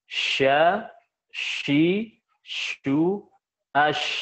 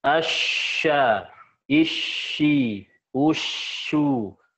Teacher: Ketika sukun, si pangkal punggung lidah dia nggak menempel kuat. Sehingga dia bisa menghasilkan sifat tafashi. Coba, kalau kuat, asya, nggak ada tafashinya.